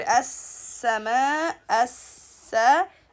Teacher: Okay, so washams, and the word as-sama, as-sa, we have to give the sin mushaddad its time as well